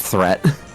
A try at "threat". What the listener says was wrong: Yeah, because it sounds, because your THs sound like it sounds like an F sound.